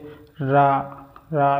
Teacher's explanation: और लोठित क्यों बोला जाता है? क्योंकि जीभ इसमें लुढ़कती है